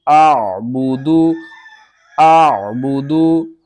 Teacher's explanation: حمزہ کے الف کے اوپر زبر آ گئی ہے، حمزہ بن گئی ہے، حمزہ کو ہم نے عین کے ساتھ ملانا ہے اور عین کو آپ نے حلق کے درمیان والے حصے سے ادا کرنا ہے